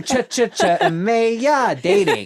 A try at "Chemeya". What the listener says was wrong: But it's Chemeya, not ch.